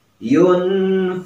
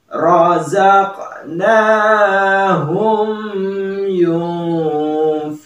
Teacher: di sini ada nun mati bertemu dengan fa ya. Maka itu merupakan hukum ikhfa ya